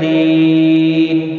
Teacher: وقف بالاسکان ہوگا، مد العارض وقفی ہوگا، 3 سے 5 الف کے برابر کھینچ کر وقف کریں گے